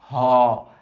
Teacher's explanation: ঘ ও একটা বাকি আছে 29টা হইছে সেটা হচ্ছে কন্ঠ নালীয় এটা কন্ঠ নালী থেকে আসে আরেকটু নিচের থেকে আসে